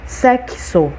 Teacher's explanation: esse x tem som de ks sexo olha só não é um som só são dois sons